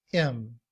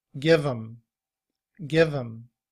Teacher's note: when we reduce the word him, we drop the H sound and we just say im. And when that's combined with the word give, it sounds like give 'em, give 'em.